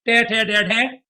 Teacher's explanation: वो सब मूर्धा से उच्चारित होते हैं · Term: मूर्धन्य व्यंजन